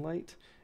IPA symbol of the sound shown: l